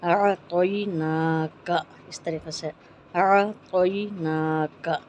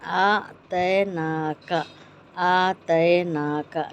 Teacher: تو کو موٹی آواز میں، یا کو جو ہے نرم آواز میں پڑھیں گے اعطیناک